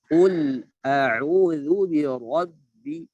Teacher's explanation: Qul, tebal qa, lamnya tipis.